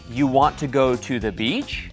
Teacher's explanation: if I said you want to go to the beach and raise my voice at the end The Listener knows it's a question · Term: inflection